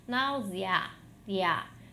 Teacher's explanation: eu tenho o E como uma semivogal e o A como uma vogal. Por isso que é um ditongo crescente. Ele vai do mais fraco para o mais forte, para o som mais forte.